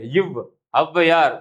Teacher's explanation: மேல்வாய் பல்லை கீழ் உதடு பொருந்துவதால் பிறக்கிறது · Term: வகர ஒற்று